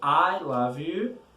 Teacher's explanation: When you say I love you, there's an emphasis on the word I.